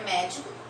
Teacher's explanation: A sílaba tônica do médico é o mé e a posição dela é a antepenúltima.